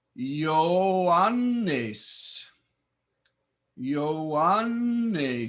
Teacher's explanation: Simply because iota tends to be pronounced as a y sound in front of another vowel. These are two sounds. This is not a diphthong. So I must make two sounds.